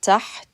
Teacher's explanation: You're literally gliding over the ha. You're stopping the sound, and then you're pronouncing it with the ta at the end.